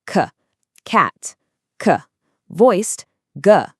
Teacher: Push the back of your tongue up to block the air right at the back of your throat.